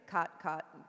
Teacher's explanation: In a lot of places in the United States, overall these words are merged. They sound exactly the same. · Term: Caught merger